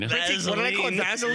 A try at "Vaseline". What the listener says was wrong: It's not V-A-Z.